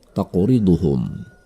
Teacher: Ada huruf qaf mati di tengah kata tersebut. Ini adalah qalqalah. Cara membacanya adalah dengan memantulkannya dengan pantulan kecil.